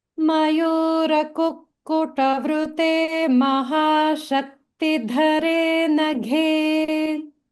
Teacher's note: So I was able to hear the Mahapranas dha and gha in dhare naghe.